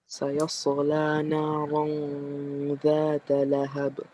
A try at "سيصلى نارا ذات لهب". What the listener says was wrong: Don't do qalqala where it doesn't belong. You say sayasla, right? So here we say sayasla naran ذات لهب.